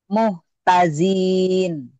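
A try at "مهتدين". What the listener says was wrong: dalnya keras. Muhtadin.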